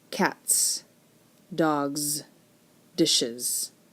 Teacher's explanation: in cats, the S says S. In dogs, it's more of a Z sound. And in dishes, it's an is sound. You add that E in there and it makes an is sound. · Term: allomorphs